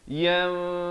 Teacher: Kena ditukarkan kepada bunyi mim dengan kadar panjang dua harakat. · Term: hukum iqlab